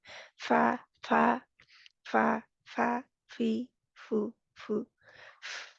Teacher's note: ऊपर वाले 2 दाँत नीचे बड़ी नरमी के साथ मिलेंगे कि हवा को बाहर निकलने की जगह मिलेगी, है ना? हवा आसानी से बाहर निकल आएगी।